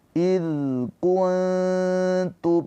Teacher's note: nun sukunnya dibaca dengan samar ditahan dua harakat sambil bersiap-siap untuk masuk ke huruf ta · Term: ikhfa hakiki